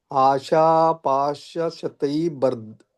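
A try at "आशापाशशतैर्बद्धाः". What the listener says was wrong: ಇದು ಬಕ್ಕೆ ಅರ್ಕಾವಳಿ ಇದೆ ಪ್ರಭುಜಿ. ಅಂದ್ರೆ ಮೊದಲು ರ ಹೇಳಿ ಆಮೇಲೆ ಬ ಹೇಳ್ಬೇಕು. ಶತೈರ್ಬದ್ಧಾಹ.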